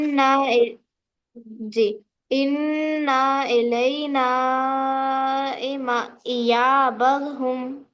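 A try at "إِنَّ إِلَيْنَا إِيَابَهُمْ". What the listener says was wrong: انا کو کھیچیے نا بیٹے آپ، انا کو کھیچے. نہ مشدد ہے نا، خالی الف نہیں ہوتا نا وہاں پہ.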